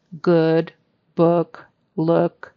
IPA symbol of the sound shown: ʊ